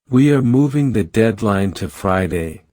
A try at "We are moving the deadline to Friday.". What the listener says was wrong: No. You sound like you are begging. Speak with weight.